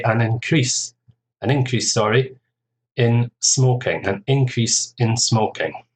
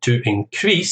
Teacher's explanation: An increase, stress on the first syllable, is the noun. Actually, this is often the case, actually, where we have a noun and a verb, which are the same word.